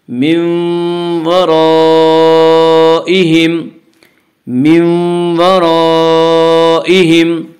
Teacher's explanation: حروف مدہ کے بعد حمزہ اسی کلمے میں آ رہا ہے، اور اسے 3 یا 4 الف کے برابر کھینچ کر پڑھیں گے. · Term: مد متصل